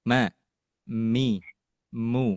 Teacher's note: dengungan yang keluar dari alkhaisumnya begitu kecil tetapi masih kerasa ada dengungan